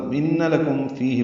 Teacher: فی یا مدہ ہے، دو حرکات لمبا ہے